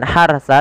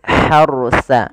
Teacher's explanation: kemudian hati-hati di dalam melafalkan r-nya ini bukan Harsa tapi Harsa rnya ditebalkan karena ada huruf ra sukun didahului dengan fathah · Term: Ro-nya ditebalkan